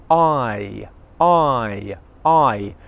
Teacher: this diphthong is all coming from the front of your mouth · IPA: /aɪ/